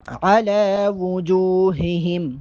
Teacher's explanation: لام پہ کھڑا زبر ہے، لام کو ایک الف کے برابر لمبا کر کے پڑھیں گے۔ علی وجوہہم، وجوہہم، پیش صحیح سے ادا کریں گے۔